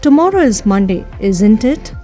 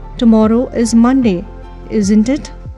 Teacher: we use a falling tone at isn't here